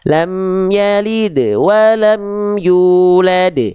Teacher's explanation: Pada kalimat yulad karena berhenti kita di sana itu namanya adalah qalqalah kubro. · Pantulan yang awal pada kalimat lam yalid itu pantulannya qalqalah sughra. Pantulannya lebih ringan.